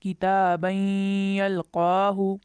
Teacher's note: नून की आवाज़ को छुपाकर गुन्ना के साथ पढ़ा